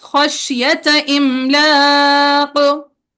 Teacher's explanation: खशियता लंबा नहीं करेंगे, खशियत इमलाक।